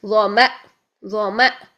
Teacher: تو جب بھی حمزہ کو ہم ساکن حالت میں پڑھیں گے تو جھٹکے سے اس کی آواز کو بند کر دیں گے